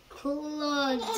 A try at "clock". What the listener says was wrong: It's not a D.